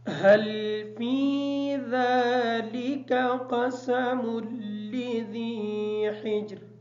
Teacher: فا کو تھوڑا سا لمبا کریں گے تاکہ یا ادا ہو جائے. ذال کھڑی زبر کی وجہ سے اس کو بھی تھوڑا سا لمبا کر کے پڑھیں گے. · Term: یا مدہ